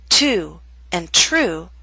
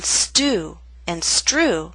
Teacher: With ST or STR, the true T loses that strong puff of air. So in the words to and true we have the puff of air. But in stew and strew that strong puff of air is absent.